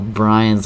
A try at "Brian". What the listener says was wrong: Brian. No S.